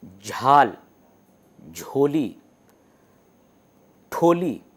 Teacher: ٹ کے ساتھ ڈھ جو ہ ہے وہ بالکل سینے کے اندر سے آواز آتی ہے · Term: ایسپریشن مارکر